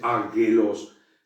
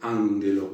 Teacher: Es decir, se pronuncia como una ni, como una n, pero sin embargo se escriben las dos gamas juntas, nada más que se pronuncia nada más la primera gama como una n griega, como una ni, y entonces no se dice águelos, sino que se dice ángelos.